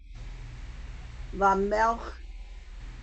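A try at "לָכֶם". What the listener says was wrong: No, it's not silent. It just doesn't have a vowel at the end. lachem.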